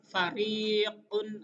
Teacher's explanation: keluar dari pertemuan gigi atas dan bibir bawah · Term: huruf fa